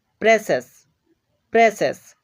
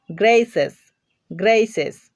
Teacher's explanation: প্রেসেস, প্রেসেস, একটু ভালোভাবে লক্ষ্য করো, এখানে আমরা সি এর পরে একাধিক ভাওয়েল পাচ্ছি, আই ও ইউ, এখানে তিনটা ভাওয়েল রয়েছে, এই জন্য সি এর উচ্চারণ হয়ে যাচ্ছে তালব্য স এর মতো